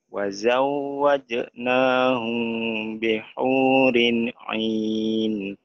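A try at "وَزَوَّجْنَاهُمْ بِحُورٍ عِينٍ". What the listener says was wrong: Belum ke hidung sedikit itu, kurangnya kurang ke hidung oh, sedikit.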